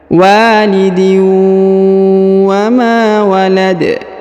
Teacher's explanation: huruf ma-nya kita panjangkan 2 harokat karena di depannya terdapat alif